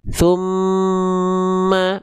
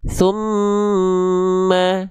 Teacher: harakat pertama itu kita fokus di M-nya. Lalu harakat kedua alirkan suaranya ke hidung. Tumma. Makanya ditahan dulu jangan tergesa-gesa. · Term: ghunah, gunnah